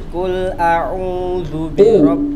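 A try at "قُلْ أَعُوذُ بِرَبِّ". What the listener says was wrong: bukan kul tuh makan. Qul. Di sini qul ya, katakanlah. Hati-hati. Qul bukan kul.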